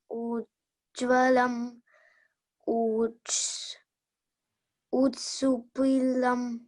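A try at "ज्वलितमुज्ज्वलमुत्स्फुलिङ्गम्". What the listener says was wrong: Mutspulingam. No, Mutspulingam. Mut. Spu. Spu. Spu. Lingam. Mutspulingam. And the previous word is Mujwalam. As I said, you have to join M with you. Mujwalam.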